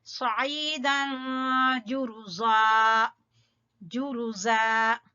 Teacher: स्वाद को पुर पड़ेंगे, आइन को या मद्दा है खींचेंगे और तनवीन के बाद जीम, तो यहाँ इख्फा होगा इसलिए यहाँ गुन्ना करेंगे।